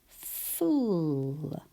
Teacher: My teeth are at the back of my bottom lip to start.